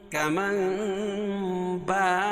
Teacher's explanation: کمن با، نون ساکن کے بعد اگر با آئے تو نون ساکن کو میم سے بدل کر، چھوٹی سی جو میم ہے اس سے بدل کر غنہ اور اخفا کے ساتھ پڑھیں گے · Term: اقلاب